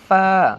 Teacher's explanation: নরম করে পড়তে হবে ফা শ্বাস চালু থাকবে